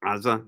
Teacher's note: You'll hear the Arabs always pronounce it Gaza, but it's a guttural, so it's with an ayin